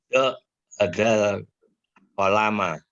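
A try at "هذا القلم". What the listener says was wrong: Panjang Pak, kolama ya. Kolaman. Jadi, kalau misalkan pakai hadal itu pakai alif lam. Jadi hadal kolama kan gitu. Hadal kolama.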